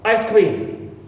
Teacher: the K, sound K, in cream is aspirated · in the compound noun, as you know, the first part receives the primary stress. It means ice is stressed.